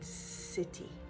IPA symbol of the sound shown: s